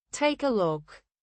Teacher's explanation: The K sound at the end of take blends with look.